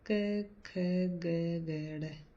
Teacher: इनका उच्चारण स्थान कोमल तालु कंठ से ऊपर का स्थान है